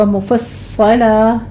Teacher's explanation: صاد کو پر پڑھتے ہوئے صاد کے پر تشدید ادا کریں گے سختی سے، اور آگے وقف ابدال کر لیں گے، یعنی 2 زبروں میں سے فتحتین میں سے ہم نے ایک ادا کرنی ہے.